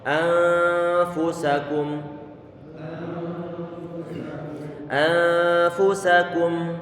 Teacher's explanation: Fu kita monyongkan bibir kita karena fa dalam kondisi dhammah, kemudian sa kita buka mulut kita dengan cara datar, sa, kemudian kum kondisinya sama dengan kata bariikum tadi itu.